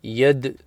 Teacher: We've got the Ya joining the Dal with the Fatha, Yad, Yad. Dal bounces, it's a Qalqala letter